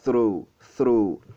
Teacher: la langue placée entre les dents. Vous essayez un peu de souffler, de faire sortir de l'air de votre bouche. Through, alors le son que vous aurez, c'est through, through.